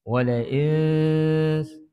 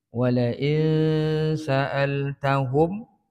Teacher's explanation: ولئن سألتهم nun mati bertemu dengan sin ikhfa hakiki, kita baca dengan dengung qada 2 harakat. Sembunyikan bunyi nun itu ke dalam huruf sin. Dia akan jadi gabungan bunyi, bukan bunyi nun, bukan bunyi sin. Wala'in, sebutan tu macam nak sebut huruf sin tapi belum sebut lagi.